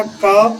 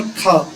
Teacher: पहले वाले अल्प प्राण होते हैं, दूसरे वाले महाप्राण होते हैं